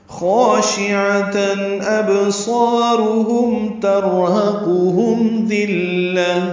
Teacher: ابصارهم با ساکن پہ قلقلہ، صاد پر، الف مدہ بھی پر، را بھی پر، ہم میں میم ساکن پہ اظہار شفوی. ترحقهم میں را پر، ہا اقصی حلق سے ادا کریں گے. قاف پر پڑھیں گے، ہم میں میم ساکن کے بعد زار آنے کی وجہ سے اظہار شفوی ہے.